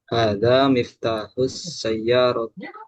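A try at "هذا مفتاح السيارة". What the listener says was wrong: Ahsanta.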